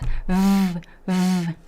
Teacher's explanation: to pronounce the V, we don't touch the lips, we just touch the teeth on the lower lip.